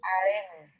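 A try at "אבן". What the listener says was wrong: Pero esta no es una resh, sino una ba. Aben. Aben.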